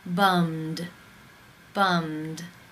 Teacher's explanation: final sound in the infinitive is the M consonant sound mmm it is voiced therefore it is case 2 and the ed is pronounced as the D